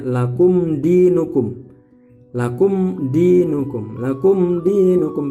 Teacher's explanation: adalah berarti jelas yang dibaca jelas adalah m-nya minimnya dibaca jelas tidak boleh dengung tidak boleh berlama-lama harus m tegas harus dibaca jelas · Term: Idhar